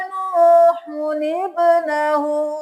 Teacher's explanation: हम नूहुब्नहु नहीं करेंगे, हम इस छोटे से नून को भी पढ़ेंगे। नून पेशो नू, हा पेशो नूहु, नून ज़ेर बा निब।